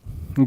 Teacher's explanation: हमारा महाप्राण है और सघोष भी है। तो हम यहाँ देखेंगे जो घा है हमारा दोनों जो है शब्दों को पूरा करता है, दोनों तरह का है, सघोष भी है और महाप्राण भी है।